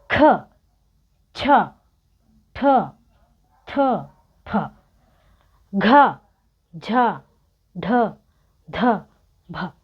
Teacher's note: ನಾವು ಪ್ರಾಣ ಉಸಿರಿಂದ ನಾವು ಜಾಸ್ತಿಯಾಗಿ ಹೇಳ್ತಾ ಇದ್ದೀವಿ. ಸೋ ಅದಕ್ಕೆ ನಾವು ಅದನ್ನ ಮಹಾಪ್ರಾಣ ನಮ್ಮ ಪ್ರಾಣವನ್ನ ಜಾಸ್ತಿ ಪಣಕ್ಕೆ ಇಡ್ತಾ ಇದ್ದೀವಿ.